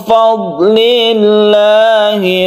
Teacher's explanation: Min fadlillah, nun mati bertemu dengan fa, ikhfa hakiki, kemudian fadlillah, dotnya ini jangan dipantulkan. Lafaz Allah dibaca tipis karena sebelumnya ada kasrah.